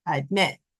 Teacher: So the stress is at the end of the word in the second syllable